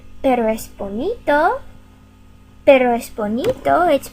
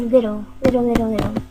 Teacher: you just want to tap the tip of your tongue up to the roof of your mouth quickly like we do when we say little